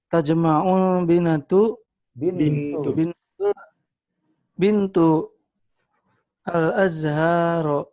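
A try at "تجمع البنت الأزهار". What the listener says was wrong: Oke, disambung tajma'ul bintul azhar.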